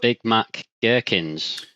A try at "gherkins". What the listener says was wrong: Big gherkins. It's not jerkins. jerkins.